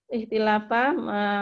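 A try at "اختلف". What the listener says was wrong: Ikhtalafa bukan ikhtilafa. Ikhtalafa fil madi.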